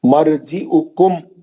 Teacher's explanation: مرجعکم جلدی پڑھیں گے، غنہ نہیں کریں گے، میم کو نہیں کھینچیں گے، کیوں؟ یہ اظہار کا حرف ہے، اظہار شفوی ہے یہ۔